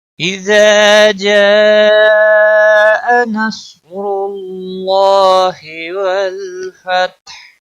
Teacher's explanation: اذا جاء نصر اللہ والفتح، لام کو ہلانا نہیں، فتح اور ہا وقف کی صورت میں ساکن ہوگا